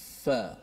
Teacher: Di mana huruf fa ini kita menggunakan gigi kacip kita sebelah atas. Ni gigi kacip sebelah atas, menekan kepada perut bibir kita. Bila sebut perut ni batnus syafah, maksud dia sebelah dalam lah.